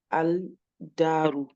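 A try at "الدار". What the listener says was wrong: Ici, c'est pareil, ça, on prononce. En fait, tu vas pas prononcer le lem. Si après un shadda, tu prononces jamais le lem. Non, on le prononce pas parce que ici, regarde, c'est pareil que là. Là, j'ai le elif, ok. Là, j'ai le lem, ok. Ici, j'ai ma lettre. ma lettre, j'ai une shadda.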